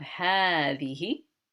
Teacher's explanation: this ha is pronounced as a long ha as though there is an alif after it but the alif is not there